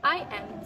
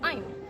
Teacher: elision is present here when the speaker pronounces I am to I'm. We can see that elision of schwa is present.